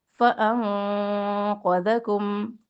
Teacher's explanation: فانقذکم، یہاں پہ اخفا کریں گے موٹا، فانقذکم، قوف موٹا ہے، ذال کو نرمی سے پڑھنا ہے ، قوف کے ساتھ ذال کو موٹا نہیں پڑھنا اور ذال